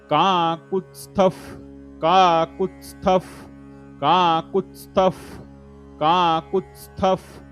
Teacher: त्या स्थच्या समोर विसर्ग आहे, विसर्गाच्या समोर प हे शब्द आहे, त्यामुळे विसर्गाच्या समोर प असल्या कारणानं विसर्गाचा उच्चार फ मध्ये होतो.